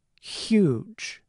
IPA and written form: xjudʒ (huge)